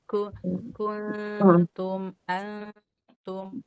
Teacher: ikhfa itu nunnya hilang karena sudah jadi samar nunnya